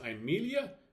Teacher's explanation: We see that there are 4 syllables, and when we add these syllables onto the diagram, we discover that the penult is short, therefore the accent will fall on the antepenult